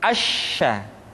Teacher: huruf sya sya dikeluarkan dengan cara mengangkat Tengah lidah kita ke langit-langit